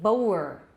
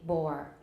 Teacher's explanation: Boer, I say bore. 这 个 双 母 音 的 后 面 的 那 个 O 已 经 没 有 了。 Bore. 其 实 它 就 是 一 个 开 口 O， 我 们 在 注 音 的 时 候， 在 标 音 的 时 候 是 开 口 O。So bore and coir.